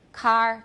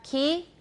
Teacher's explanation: Is the K in those two words equally velar? No, it's more back for car and more front for key